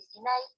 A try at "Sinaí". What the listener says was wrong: En la segunda I es la mayor fuerza de voz.